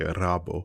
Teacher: There's no L sound in Japanese, so they say rabo